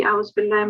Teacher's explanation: it did sound that on the ba you were making a dhamma, but it's a fatha